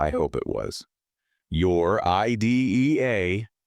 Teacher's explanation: Nine syllables, but only four heavy beats.